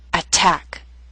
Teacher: word with two syllables stress is on the second attack so T although in the middle of the word is at the beginning of a stressed syllable so we have a true T